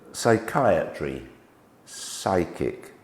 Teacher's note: We just make the sound of S. When we get P, S and Y coming together, we actually make the sound sigh. So the Y becomes an I sound.